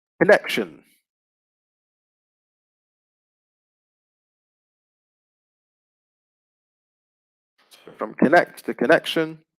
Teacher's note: the stress is still on the same syllable the second syllable